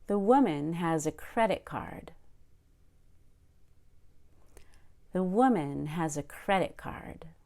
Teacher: I stressed the word woman on the first syllable and credit card on the first syllable of the first word in credit card · on the first syllable of the first word in credit card notice again how I go up on woo and I go up on cred and then I relaxed right after it